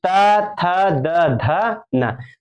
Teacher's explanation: पांचों त थ द ध न जो पाच है ना कहां से उच्चारण होता है दांतों से होता है